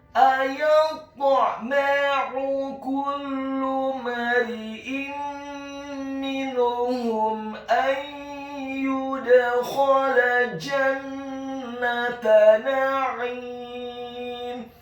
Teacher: Kata na'im, huruf nun-nya dibaca tipis, fathah 1 harokat. Huruf ain-nya ditekankan keluar dari tenggorokan bagian tengah, kasrah 2 harokat karena setelahnya ada huruf ya sukun. Dan di akhir ayat huruf mim-nya dibaca sukun.